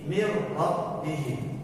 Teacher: Maka orang Arab untuk mempermudahnya menghilangkan suara huruf nunnya dan kemudian langsung mentasydidkan ro menjadi mir rabbihi